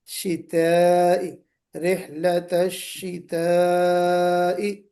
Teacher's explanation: منہ میں گولائی نہیں، منہ بھرنا نہیں چاہیے، شتا بولتے ہوئے ساؤنڈ آپ کی منہ بھر کے نہیں نکلنا چاہیے